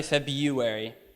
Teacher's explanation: some people do pronounce the R for sure but I say February